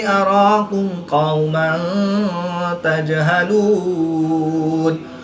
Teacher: نون مشدد میں ہمیشہ غنہ ہوتا ہے تو یہاں پر ہم غنہ آنے کر کے پڑھیں گے۔ دو زبر کی تنوین کے بعد تا حرف اخفا میں سے ہے تو یہاں پر اخفا ہوگا یعنی غنہ زمانی کر کے پڑھیں گے